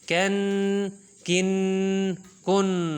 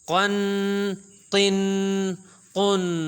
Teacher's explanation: قوف اور کیف جو ہے قوف کو موٹا پڑھنا ہے